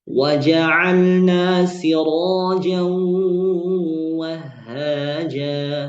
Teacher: Siraja waja'alna sirajan wahhaja siraja dan mu'sirati jumhur membaca dengan tafkhim ra. Nah, ini jumhur ulama mayoritas ulama ahlul Quran membaca dengan mentafkhimkan ra-nya, mufakham ya. Ra-nya jadi tebal ya.